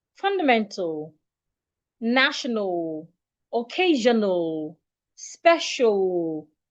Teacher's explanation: when you have words ending in AL, remember, treat the A as a silent letter. Do not articulate it.